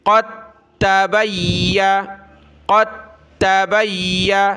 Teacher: تو یہاں دال ساکن ہے، اس کو چھوڑ دینا ہے، تا کے ساتھ ہم نے قاف کو ملانا ہے